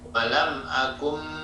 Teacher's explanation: nun bertemu dengan ba, dibaca berubah menjadi mim disertai samar, ya, dan dengung. Walam akum, maka bunyinya menjadi mim, ya. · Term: iklab